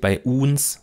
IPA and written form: baɪ̯ ˈʔuːns (bei uns)